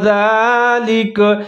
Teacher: کاف کے اوپر زبر ہے لیکن کاف کی آواز کو ساکن کی آواز کے ساتھ تبدیل کر دیں گے